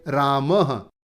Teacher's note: ये जो विसर्ग हैं इन्हें ह के जैसे बोलेंगे